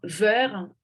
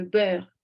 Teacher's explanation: labiodental à la place d'utiliser le be bilabial